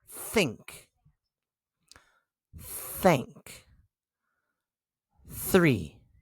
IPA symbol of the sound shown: θ